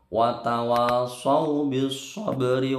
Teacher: Sabri, roknya ini tarakik tipis.